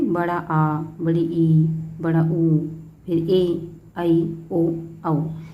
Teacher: दीर्घ मीन्स लंबा समय। तो जिनको बोलने के लिए ह्रस्व से 2 गुना समय लगता है उनको दीर्घ स्वर कहते हैं। मीन्स ह्रस्व से थोड़ा अधिक समय लगेगा, 2 गुना समय लगेगा, उनको हम दीर्घ स्वर कहते हैं।